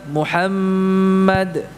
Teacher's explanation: ditahan dulu ya memanjang ya durasi ghunnahnya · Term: ghunnah yang Akmal